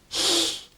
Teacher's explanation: You put your tongue to the roof of your mouth, and you blow out sideways. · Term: double L